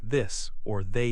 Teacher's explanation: Also, the TH sound in words like this or they is voiced.